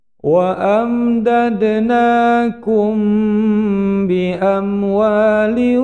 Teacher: mim sukun bertemu ba, dipanjangkan dua ketukan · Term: ikhfa safawi